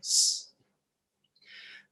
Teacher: If it's the S alone, we want the S sound. Teeth on teeth, pushing air in between.